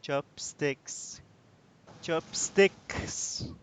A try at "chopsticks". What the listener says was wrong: You're saying it correctly.